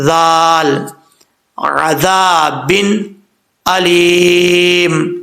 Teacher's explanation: عین کے بعد ذال ہے، ذال بغیر سیٹی کے پڑھا جاتا ہے، آپ کو کئی دفعہ پہلے بتا چکا ہوں، اس میں سیٹی نہیں آئے گی۔ زبان کا سرا اوپر والے دانتوں کے اندرونی کنارے سے لگے تو ذال پڑھا جاتا ہے بغیر سیٹی کے، ذال، عذاب علیم، اوکے۔